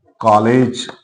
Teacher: अंग्रेजी भाषा से आगत ध्वनि है जैसे हम शब्द पढ़े कॉलेज इसका जो उच्चारण है वह ओ और आ के मध्य का होता है